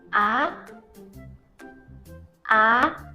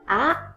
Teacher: The problem that often occurs in the second tone is that the voice does not rise. Always remember, second tone is a question tone. Do not forget, rise your voice up.